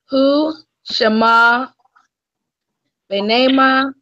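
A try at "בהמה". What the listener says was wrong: You adding letters. I don't see no noon in there.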